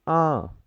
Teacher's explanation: और इसके ऊपर अगर मैं चंद्र बिंदु लगा लेता हूं तो मैं कहता हूं कि आ, इसमें मेरी थोड़ी सी वॉइस नाक की भी सुनाई देगी